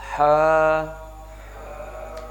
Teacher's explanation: ہا کی جو آواز ہے یہ باریک ہے اور حلق سے ہی ادا ہوتی ہے